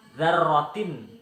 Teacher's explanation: Selanjutnya yaitu pada kata dzarratin, dibaca idhar sebab huruf ta berharokat kasrah tanwin bertemu huruf kha, dibaca jelas tidak berdengung sama sekali